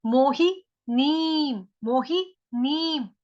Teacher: ऊपर अनुस्वार, उसका उच्चारण आधा म।